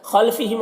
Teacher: میم میں اظہار شفوی ہو رہا ہے، اس میم کو جلد پڑھنا ہے۔